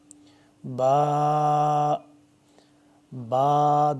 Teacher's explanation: دونوں ہونٹوں کو ملا کے